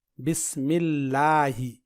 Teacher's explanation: لفظ اللہ سے پہلے زیر یعنی کسرہ آئے تو لفظ اللہ کے لام کو باریک پڑھیں گے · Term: باریک لام